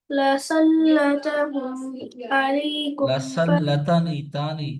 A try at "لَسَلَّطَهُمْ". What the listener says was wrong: لسلطهم तो मोटा पड़े बोल्ड